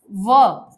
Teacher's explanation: जब आप व बोलेंगे तो ऊपर के दांत नीचे के होंठ से टकराएंगे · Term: दंतोष्ठ